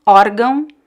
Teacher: In this case, the stress syllable is the first one